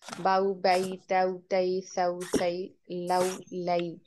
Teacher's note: हरूफ लीन स्ट्रेच किए बगैर पढ़े जाते हैं।